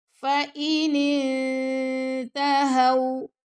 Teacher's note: اب یہاں نون ساکن کے بعد آ رہا ہے تا، تو یہاں پہ ہوگا اخفا۔ اخفا کا کیا مطلب ہوتا ہے کہ نون کی آواز کو چھپانا۔ کس کے پاس چھپائیں گے؟ تا کے مخرج کے پاس